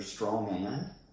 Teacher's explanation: usually natives don't pronounce this letter D at the end of the word and so it will sound like strong and instead of strong